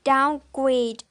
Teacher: So the primary stress is on the second word grade and the secondary stress is on the first word down.